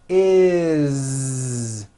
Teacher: When you add an S ending, this time we always add the ending is with a voiced Z. Is. It doesn't matter that it's spelled with an S.